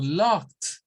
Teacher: aquí no hay una extrasílaba, porque no se agrega una sílaba extra, porque no hay una vocal. Entonces, a estos es como que a lo que está al final le agreguemos un sonido consonante más. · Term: sonido de una T